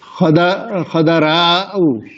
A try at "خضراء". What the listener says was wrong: دا کے اوپر زبر نہیں ہے، ساکن ہے.